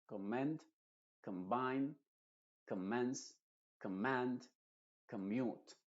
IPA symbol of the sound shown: ə